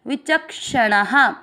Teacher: च के साथ आधा क पढ़ना है विचक और श में आ मिक्स करना है विचक्षणा। णा में आ की मात्रा तो विसर्ग को पढ़ेंगे हा